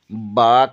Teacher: اور مخارج نمبر 2 میں ہم نے با کے بارے میں پڑھا۔ با بند ہونٹوں کے گیلے حصے سے ادا ہوتا ہے